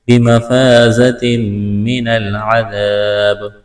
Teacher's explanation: فلا تحسبنہم بمفازۃ الف مدہ ہے، تنوین کے بعد میم مشدد ہے، یہاں پر ادغام کریں گے، غنہ کریں گے، آواز ناک میں چھپائیں گے۔